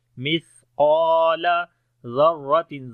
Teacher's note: قاف اور الف کو موٹا پڑھیں گے، الف مدہ ہے · اور الف کو موٹا پڑھیں گے، الف مدہ ہے، مثقال ذرۃ، زال کو نرم پڑھیں گے، را کو موٹا پڑھیں گے